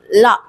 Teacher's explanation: நாக்கோட மேல் அண்ணத்தை அதாவது முன்னாடி இருக்கிற நுனி அண்ணத்தை தொடணும் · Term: வகர லகரம்